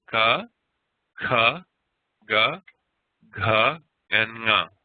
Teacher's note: the velars, those ones that are pronounced in the back of the throat